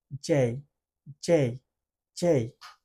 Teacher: জিহ্বার মাঝের অংশটা উপরের দিকে আসতেছে, ঠোঁটটা একটু গোলাকার হচ্ছে এবং সামনের দিকে যাচ্ছে